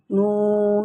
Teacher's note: इसका मखरज जुबान का किनारा अगले हिस्से का सामने का हिस्सा दांतों के सामने लगाएंगे तो नून निकलेगा।